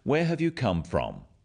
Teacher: notice also the falling tone with these questions where have you come from this makes the question sound friendly